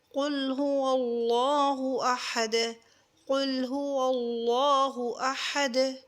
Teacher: اللہ والے لام کو پر کر کے پڑھیں گے کیونکہ پہلے والے جو لیٹر ہے واو اس کے اوپر زبر ہے · دال پہ کلکلا ہوگا، وقف میں ابدال ہوگا یعنی چینج ہوگا۔ یہاں جو دو پیش کی حرکت ہے اس کو ہم چینج کر کے یعنی سکون میں وقف کے وقت تو یہاں پہ کلکلا ہوگا۔